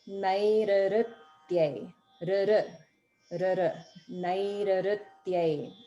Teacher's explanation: where there's an R consonant followed by the R vowel, it's almost like you double an R sound.